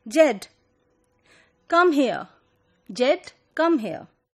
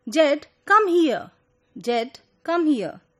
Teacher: the first time she said here, she pronounced it with an open variant, ear, instead of ear, which was a case in the second example where she pronounced it with a more close variant.